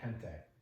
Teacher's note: if it's a G before the letter I or E, it actually sounds like an English H. So if you've heard the word gente, it's spelled G-E-N-T-E, but you pronounce the G like an H, so it sounds like gente.